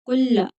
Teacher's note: कुल्ला लाम को सख्ती के साथ पढ़ेंगे क्योंकि मुशद्दद है। कुल्ला, कुला नहीं पढ़ेंगे, कुलामा नहीं, कुल्लामा।